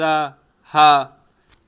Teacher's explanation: कंठ में हा बोलेंगे तो कंठ में रगड़ या घर्षण होता है